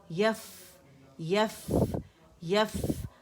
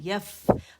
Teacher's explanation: सही आपने निचले होंठ का पेट जो गीला हिस्सा, ऊपर के दांतों को नरमी से लगाया है